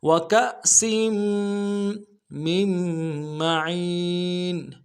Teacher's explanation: میم کو آگے میم کے ساتھ ملانا ہے، نون نہیں پڑھیں گے